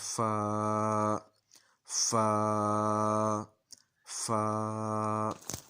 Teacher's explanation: और फ़ा के बाद फिर अलिफ़ की आवाज़, अलिफ़ की आवाज़ जो है वो मुंह के खाली हिस्से से आएगी, और फ़ा जो है ना वो दांतों और होंठों के आपस में टकराने से ये आवाज़ आ जाएगी